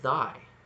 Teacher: You've got that I sound, thy, and then it closes to an e. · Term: diphthong